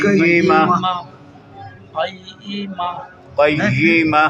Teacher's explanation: وقف کریں گے نا ہم، ہلکا سا ہا آئے گا